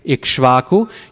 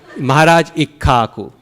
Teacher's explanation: Ka, sha, va. So let's just get rid of the sha and the va.